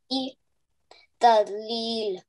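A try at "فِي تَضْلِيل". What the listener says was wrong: Fi has to be stretched. Yai Madar rule, remember.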